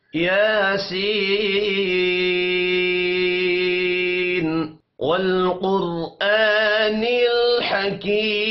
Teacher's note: لام ساکن ہے، قلقلہ نہیں کریں گے۔ قوف موٹا پڑا جائے گا۔